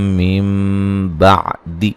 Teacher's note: यहाँ नून को मीम से बदल देंगे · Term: नून साकिन का इखलाब